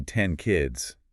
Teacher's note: So, if you say "10 kids", your tongue doesn't bother going to the front teeth for the N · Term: place assimilation